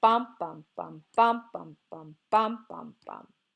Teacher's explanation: forgive me alright the dactyl also has three syllables but now the pattern is stressed followed by two unstressed